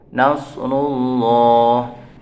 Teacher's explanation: lafadz Allah atau lafadz jalalah yang dibaca tafkhim atau tebal karena didahului dengan dhamma